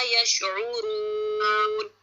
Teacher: را پہ موٹا پڑا جائے گا, دمہ ہے موٹا پڑا جائے گا